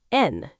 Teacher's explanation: and is often reduced to just N in natural speech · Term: reduction